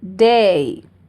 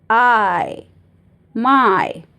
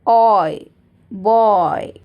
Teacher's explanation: जो फर्स्ट 3 है वो ई की तरफ ग्लाइड होते हैं, मतलब जब साउंड निकलता है वो ई की तरफ आता है, ई की तरफ एंड होता है। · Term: डिप्थोंग्स